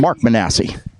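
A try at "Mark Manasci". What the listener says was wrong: It's actually pronounced, he told me this, like Joe Pesci. It's pronounced Manasci. And he actually told me that because I kept calling him Mark Manassi. And he said, no, it's Manasci, like Pesci.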